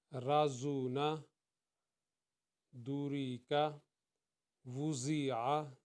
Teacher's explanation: 3 حروف جو ہیں وہ سیٹی والے ہیں، ان میں سین کی آواز آنی چاہیے، زا، سین اور صاد۔